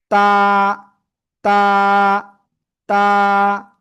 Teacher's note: জিব্বার আগা, সামনের দুই দাঁতের গোড়ায় লাগাবো, লাগিয়ে সিম্পল এক আলিফ টেনে উচ্চারণ করব · জিব্বার আগা, সামনের উপরের দুই দাঁতের গোড়ায় লাগবে, লাগিয়ে আমরা এই অক্ষরটা উচ্চারণ করব